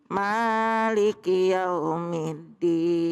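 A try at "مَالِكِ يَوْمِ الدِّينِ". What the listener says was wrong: Maknya jangan panjang-panjang. Kalau ma minta duit panjang. Maknya satu ayun aja. Maliki yau.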